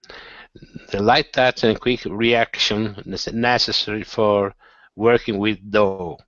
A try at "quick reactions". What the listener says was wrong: Okay, much better on the D, but you're leaving off the S on reactions. The quick reactions.